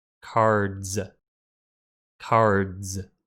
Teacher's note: If you put your hand on your throat when you say the D at the end of card, D, you can feel your throat vibrate. This means if we make card plural, that S is pronounced like a Z.